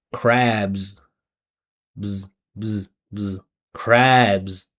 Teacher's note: when we have these words that finish with the vibrating sound, we continue the vibration and we add the Z